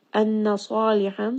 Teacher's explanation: sad is going to be heavy and it is a 2 count mad.